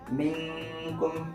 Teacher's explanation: Nah, ketika ada nun mati atau tanwin bertemu dengan 15 huruf ikhfa itu, maka dibaca samar antara izhar dan gunnah · Nah, bacanya contohnya minkum ada nun mati bertemu dengan kaf. Bacanya samar, tidak izhar, tidak jelas nunnya, dan juga kemudian dan juga digunnah